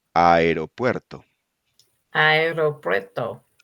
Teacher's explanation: In Spanish, a is considered one of the strong vowels, like e and o, as opposed to the weak vowels e and u. The letter a plus another strong vowel, e or o, does not form a diphthong, and each letter is pronounced separately.